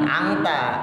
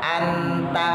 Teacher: Makanya ketika kita ngucap huruf yang ketemu ta, to, da, non mati sub atau tanwinnya, ikhfanya jangan diengin tapi jadi en